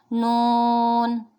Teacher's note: جب زبان کا کنارہ اور دانتوں کی جڑ کے اوپر تالوں کی جانب والے حصے سے ملے گا تو نون ادا ہوگا